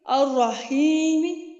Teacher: جیسے الرحیمی, جیسے کہ میں کیسے پڑھوں گی الرحیمی, حالانکہ سننے والے کو بالکل تھوڑی سی آواز آ رہی ہوگی قریب بیٹھا شخص. میں نے اس کی آخری حرکت جو زیر والی ہے اس کو میں نے اتنے آہستہ آواز سے پڑھا کہ قریب والا ہی سنے گا, یعنی 1/3 میں نے آواز ادا کی ہے.